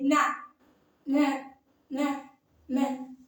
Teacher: நாவின் நுனி மேல்வாய் அன்னத்தின் முன்பகுதியை தொடுவதால் நகரம் பிறக்கிறது